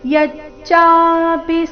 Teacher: ಯಚ್ಚಾಪಿ ಈ ರೀತಿ ಪಿನ ದೀರ್ಘ ಮಾಡಬಾರದು ಚ ದೀರ್ಘ ಪಿ ರಸ್ವ